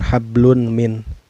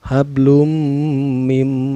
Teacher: cara bacanya memasukkan sambil berdengung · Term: Idgham Bighunnah